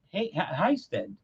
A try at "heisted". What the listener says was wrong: You say Stead, kind of like there's an E in there.